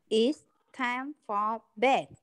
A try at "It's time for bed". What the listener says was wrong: Đó, chưa nghe em nói cái từ time đâu. Không phải là it's time. Không phải là it's time for bed. Mà là it's time. Time. It's time for bed.